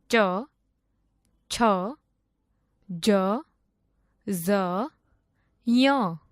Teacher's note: જે વર્ણોનું ઉચ્ચારણ તાળવા માંથી કરવામાં આવે તેને તાલવ્ય વર્ણો કહે છે